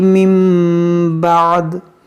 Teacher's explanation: اس نون ساکن کو ہم میم سے بدل کر پڑھیں گے اور غنہ کریں گے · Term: اقلاب